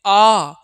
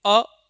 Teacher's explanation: लेकिन जब हम कहते हैं आ, मतलब जब कभी भी हम दीर्घ आ बोलते हैं, कैसा आ मेरे दोस्त, दीर्घ आ। जब हम कभी दीर्घ आ बोलते हैं तो हमारा जो मुख होता है यह पूर्ण रूप से खुल जाता है।